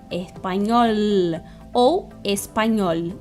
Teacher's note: Com o L, bota a língua dentro da boca, atrás dos dentes.